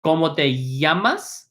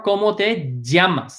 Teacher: all double L's in Spanish can be pronounced either as y, or j, like a JY combination.